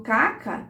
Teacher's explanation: a gente vai encontrar uma posição mais central caca e também com abertura um pouco menor da mandíbula · eu tenho a vogal anterior aberta